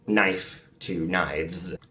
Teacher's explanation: the final sound will become voiced, like the F to V, which then makes the S voiced as well